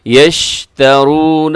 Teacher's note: شین کی آواز جو ہے وہ پھیل جاتی ہے جب بھی آپ اس کو ادا کرتے ہیں۔